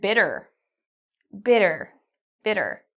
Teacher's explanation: with the T, in North American English, we pronounce this like a D. So I'm not saying bitter, I'm saying bitter, but you can do it either way.